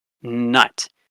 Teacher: You basically lower your velum, and it redirects the airflow from going out your mouth to going out your nose, your nostrils. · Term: nasal consonants